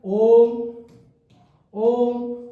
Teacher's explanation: ओ को लंबा खींचा जा रहा है और व्यंजन को बाद में बोला जा रहा है, स्वर को लंबा खींच के ओम। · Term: प्लुत स्वर